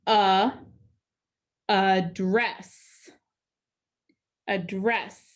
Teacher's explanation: the a at the beginning followed by that d is getting the schwa sound the upside down e and the second e is getting or